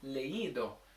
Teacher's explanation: So when I attach the I to the E, and I want to tell people, listen, put the emphasis on the I, because it should be leído